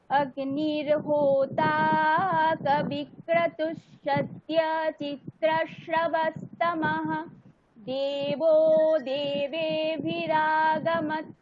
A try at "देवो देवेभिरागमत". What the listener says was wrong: গামাতা, ওখানে তকারটা হলন্তের মতন না বলে একটু অকারের মতনই বলবেন, ঠিক আছে? এরকম ভাবে পড়তে হয়। গামাতা, ওই তো হলন্ত, মানে শেষে যখন হলন্ত বর্ণ থাকবে সেইগুলোর এরকম, মানে শুনতে সুন্দর লাগবে। ওই কারণে বেদের মন্ত্রে তকার হলন্ত গুলোকে অকারের মতনই বলে যখন একদম মন্ত্রের শেষে থাকে, ঠিক আছে? ওই রকম গামাত এরকম না বলে গামাতা, এরকম, ঠিক আছে?